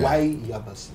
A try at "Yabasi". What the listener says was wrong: Why Yabas? Yeah, it's Yabas. The eye is silent. Yabas. But they call it Yabas.